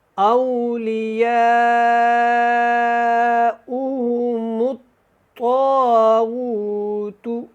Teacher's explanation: یہاں پہ طا کو بھی اور غین کو دونوں کو آپ نے موٹا پڑھنا ہے، باریک نہیں پڑھنا